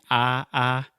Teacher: keep your tongue the same position in terms of height so your tongue is not moving up it's only moving forward listen what happens I'm saying ah ah and then I push